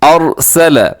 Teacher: را موٹا ہے کیونکہ را سے پہلے والے حرف کے اوپر زبر آ گئی